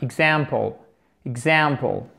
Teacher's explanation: accent tonique sur cette deuxième syllabe